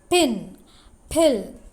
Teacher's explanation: when you articulate the words pin and pill there is forceful expulsion of air which means there is aspiration there is the presence of aspiration pin pill you are forcing